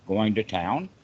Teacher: you can just say going to town with that rising tone at the end for the question